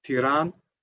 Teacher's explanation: Then we have these 7 vowels: a, e, i, u, e, u, o. The schwa, which is usually presented by the e with the umlaut, like in the capital of Albania, Tiran, it is often not pronounced, especially at the end of a word, Tiran. You don't say Tirana.